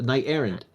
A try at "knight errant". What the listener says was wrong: Errant. Errant with a T. It has a T on the end of it. It's errant.